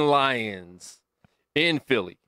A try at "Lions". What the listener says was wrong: Simple fact that you said Lions with your teeth closed was a problem.